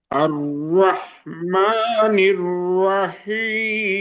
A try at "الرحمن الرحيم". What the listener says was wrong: রুয়া রুয়া হয়ে গেছে। হ্যাঁ, র আর র আর র স্ট্রেট থাকতে হবে। আর র আর র আর র ইয়েস, আর র আর আর আর আর আর আর আর আর জিহ্বাটাকে, হ্যাঁ, আর আর আর সামান্য পরিমাণ, একেবারেই সামান্য পরিমাণ করতে হবে।